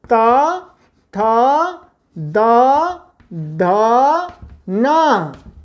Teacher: इन 5 वर्णों का उच्चारण भी ऊपर के दांतों के मूल में जिह्वा के अग्रभाग को लगा करके करना चाहिए। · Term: तवर्ग